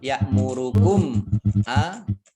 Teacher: mim sukun bertemu dengan huruf alif bacaan idhar safawi dibaca jelas